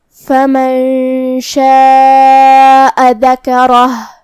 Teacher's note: रा पे ज़बर है तो रा का हुक्म है तफ़ख़ीम, हमें हर्फ रा को भारी आवाज़ में पढ़ना है। आखिरी में हम हर्फ हा पे रुकेंगे तो उस पे जज़म से रुकेंगे, तो हमें हर्फ हा को ज़ाहिर करना है